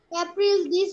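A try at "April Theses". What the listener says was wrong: April thesis. Not April, this. Thesis.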